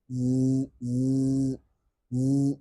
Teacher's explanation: yang paling tidak kedengaran itu zai. Z karena terhalangi oleh suara di pita suara